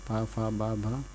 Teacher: ओष्ठ से पा वर्ग बोला जाता है, यानी कि पा वर्ग में जितने अक्षर आते हैं 5, पा फा बा भा, ठीक।